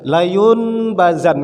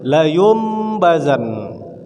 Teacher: Nun mati atau tanwin berjumpa dengan huruf ba. Cara membacanya dimasukkan huruf mim di dalam tu. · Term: iklab